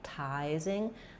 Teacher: we have secondary stress on the tizing syllable, which means the T is going to be a true T, tizing. The I is going to say a clear vowel, the I diphthong.